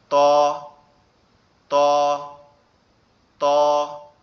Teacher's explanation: এখন আমরা, আপনারা স্ক্রিন দেখতে পাচ্ছেন, স্ক্রিনে প্রথম যে অক্ষরটা আছে সেটা হচ্ছে কি, এখানে যে অক্ষর আছে এটা হচ্ছে ত, এটা হচ্ছে কি ত। ত অক্ষরটা আমাদের জিহ্বার আগা সামনের উপরের দুই দাঁতের গোড়ার সঙ্গে লাগবে, লেগে উচ্চারিত হবে ত, ত, ত, এরকম ভাবে, ঠিক আছে।